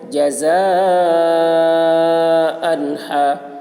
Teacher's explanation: جزاء، حرف مد کے بعد حمزہ اسی کلمہ میں ہے، اس لیے مد متصل ہوا، مد متصل کو 3 یا 4 الف کے برابر کھینچ کر پڑھیں گے۔ جزاء، تنوین کے بعد حروف حلقے میں سے ہا آ رہا ہے، اس لیے تنوین کو ظاہر کر کے بلا غنہ کے جلد پڑھیں گے، اس کو اظہار کہتے ہیں۔